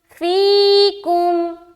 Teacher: یا مدہ ہو گیا تو ایک الف کے برابر کھینچیں گے